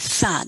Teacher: the voiceless dental fricative thought does not exist in spanish